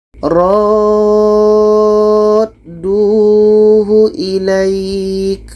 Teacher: Ra ini kita panjangkan enam harakat baru masuk ke huruf da. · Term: mad lazim kilmi mutsaqqal